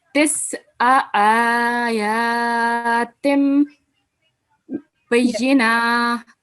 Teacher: you prolonged this ayn unnecessarily, whereas it only carries fatha stroke. So it should be just for one count or one beat.